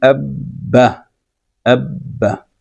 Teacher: وہ حرف ادا ہوتا ہے 2 بار۔ پہلی مرتبہ ساکن ادا ہوتا ہے، اس کے بعد پھر ادا ہوتا ہے اس حرکت کے ساتھ جو اس کے اوپر موجود ہو۔ مثال کے طور پہ آپ کہہ دیں کہ الف ہے، اس کے بعد با ہے، با کے اوپر شد ہے اور شد کے اوپر زبر ہے۔